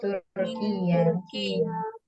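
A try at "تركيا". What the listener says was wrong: Ya-nya nggak double Bu ya. Turkiya. Jadi langsung ya. Turkiya. Jangan didobelkan. Turkiya salah. Turkiya.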